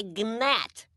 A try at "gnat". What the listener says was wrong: It's a G. Silent. It's gnat.